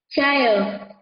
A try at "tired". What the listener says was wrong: Tired. Không phải trai đâu nhá. Tired. Tired.